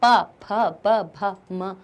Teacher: पा वर्ग को ओष्ठ वर्ग इसलिए कह देते हैं क्योंकि इनकी ध्वनि हमारे ओठ से निकलती है। प, फ, ब, भ, म सब हमारे ओष्ठ से।